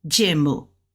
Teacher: you're saying U but it's going down and it's real sharp because it's a four fourth tone